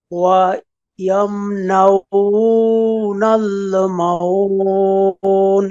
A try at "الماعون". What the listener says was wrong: এই যে মাউন এমন বলেছেন, কিন্তু এখানে এই যে জবরের বামে খালি আলিফ, এক আলিফ টান আছে, আপনি এক আলিফ টান দেন নাই, তাহলে কি হবে, মাউন, বলেন। এই যে মাউন, মা, এই টানকে এরকম টান দিতে হবে কি, মাউন।